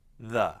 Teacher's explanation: you want the tip of your tongue to be between the teeth. You don't need to bite the tongue. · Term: TH sound